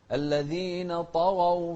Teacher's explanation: طغوا مفخم الطاء والغين